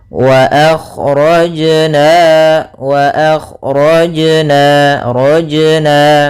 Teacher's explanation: Kemudian di sini lafal jim ada bacaan qalqalah, yaitu suara jimnya memantul. Akan tetapi hati-hati jangan sampai membantulkannya dengan saktah.